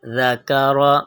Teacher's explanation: ذال کی آواز باریک اور نرم ہوگی